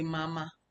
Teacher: If you go through this thing, the neutral tone, those neutral tone are the tone that are silent. Like when you say mama, the first ma has the tone, the second one has nothing. It has no tone.